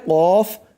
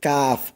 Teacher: উপরটা হচ্ছে মোটা করে আর এটা হচ্ছে শক্ত করে, মোটা করে কফ আর এটা হচ্ছে শক্ত করে কাফ